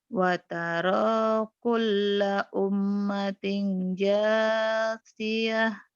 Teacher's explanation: Lam jangan ditahan. Kalau mim dan nun bertasydid ditahan. Lamnya jangan ditahan.